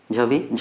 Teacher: झ फिर महाप्राण में आएगा